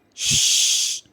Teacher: we got air from the mouth so these are unvoiced sounds · lungs to the mouth so these are the sounds of unvoiced if we pronounce the sounds we get air from the mouth and we don't feel any vibration in the throat